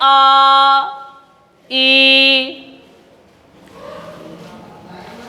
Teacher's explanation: इनको बोलने में ह्रस्व से दोगुना समय लगता है, तो ये हमारे दीर्घ स्वर कहलाते हैं। इनकी भी संख्याएं हमने बोला तो आपको लगा कि इसमें अधिक समय लगता है, ह्रस्व से दोगुना समय लगता है।